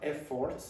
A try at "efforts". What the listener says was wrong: again we have that issue with pronouncing all the syllables equally